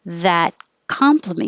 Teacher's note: you don't have to say the t on the end